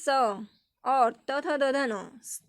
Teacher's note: उसमें देखिए स और त थ द ध न, त वर्ग पूरे और स ये आता है आपका दांतों से टकरा करके उच्चारण होता है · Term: दंत ध्वनियाँ